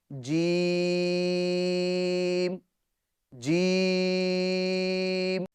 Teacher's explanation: جیم کا مخرج ہے زبان کے درمیان اور تالو کے درمیان سے جیم ادا ہوتا ہے